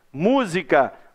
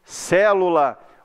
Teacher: a sílaba tônica é a antepenúltima